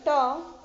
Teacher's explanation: जो ट होता है वो मूर्धन्य से बोला जाता है